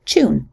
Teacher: In some varieties of English, especially in parts of Britain, words like tune are also pronounced with a coalesced Ch at the beginning